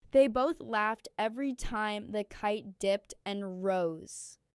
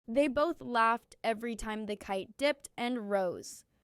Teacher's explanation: Stress laughed and rose to give the sentence life.